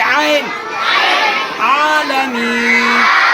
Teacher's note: आइन निकालेंगे, आइन हलक से निकालेंगे